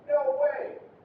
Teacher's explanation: It's just high. No way. Starts high, finishes high.